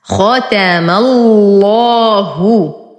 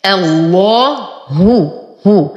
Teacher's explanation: نرقق الهاء فلا أقول الله، لا أفخم الهاء مع اللام، وإنما أخلص الهاء من تغليظ اللام فتصبح الله هو.